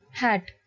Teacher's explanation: saying this sound involves a forceful expulsion of air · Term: aspirated sounds